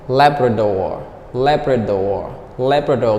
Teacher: The stress is on the first syllable.